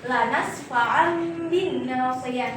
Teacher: Nah, tapi cara baca yang sebenarnya itu adalah lanas fa'an bi. Nah, berarti fathah tanwinnya itu diganti dengan huruf mim sukun. Jadinya bacaannya lanas fa'an bin nasiyah. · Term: iqlab